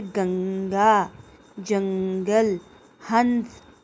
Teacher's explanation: इसका उच्चारण करते हुए हवा केवल नाक से निकलती है। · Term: अनुस्वार